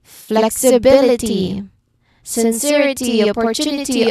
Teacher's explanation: all of them follow the same rhythm. Third syllable from the end is stressed.